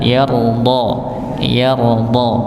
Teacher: Ya, wala saufa yarda. Ra-nya sukun, sebelumnya ada huruf fathah, maka dibaca tebal